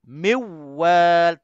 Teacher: Tapi dalam bacaan lain, dalam bacaan khalaf, ana murid kepada Hamzah, bacaan qiraah 7, idgham dia di sini idgham kamil. Miwal tanpa dengung tapi dia masuk terus ke dalam waw